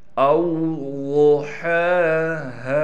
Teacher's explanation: ضاد کو موٹا کر کے پڑھیں گے، ہا کے اوپر کڑا زبر ہونے کی وجہ سے ہا کو ایک الف کی مقدار کھینچیں گے، اس ہا کو بھی کھینچیں گے۔